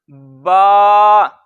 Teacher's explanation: बा दोनों होंठों के तर हिस्से से, ये जो गीला हिस्सा होता है।